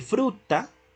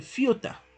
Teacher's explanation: Ya no dice fruta, sino que el niño dice fiuta. Entonces se afectó ese grupo consonántico, se reemplazó por la F y la semivocal